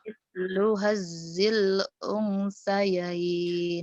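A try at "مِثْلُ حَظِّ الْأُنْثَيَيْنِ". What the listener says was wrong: kamu ketahuan tasjidnya nggak kelihatan ya. Mislu hadzil unsayain. itu disentak itu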